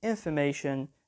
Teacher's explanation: information the stress is on the third syllable